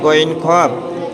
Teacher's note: আলাকের বা কন্ঠনালীর শেষ ভাগ হতে উচ্চারিত হয়